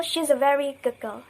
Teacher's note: d assimilates to g